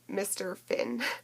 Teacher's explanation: she mixes up the bilabial p sound with the labiodental f